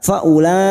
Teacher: kita panjangkan 5 harokat, bertemunya mat dengan hamzah dalam satu kalimat